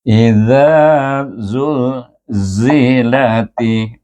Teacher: Huruf zal di mana kita terpaksa menjulurkan hujung lidah kita di depan gigi kacip kita dan keluar huruf zal di situ. Tapi dia baris di atas, bertemu dengan alif, baca panjang 2 harakat, iaitu dengan mad asli.